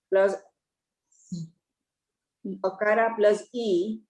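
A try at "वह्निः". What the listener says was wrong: Ihi, not e. Visarga is there. Then visarga you cannot say it from separately. Ihi.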